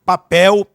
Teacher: nós temos o pel aí como sílaba tônica, sendo a última sílaba mais forte